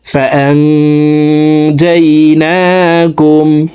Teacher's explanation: এখানে ইকফা গুন্না, নুন সেকেন্ডের পরে ইকফার 15টি হরফের ভিতরে একটি হরফ জিম আসছে, এই কারণে এই নুন সেকেন্ডকে নাকের ভিতরে লুকাইয়া গুন্নার সহিত পড়ব